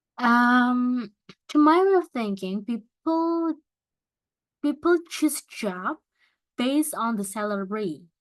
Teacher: Jadi kalau misalkan mengakhiri jawaban, it should be falling intonation.